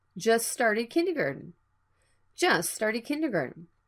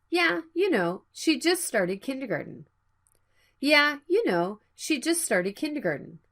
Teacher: the T sound is between a consonant sound. It can be dropped.